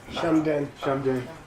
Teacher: It's always shum. It's a heavy prenasal.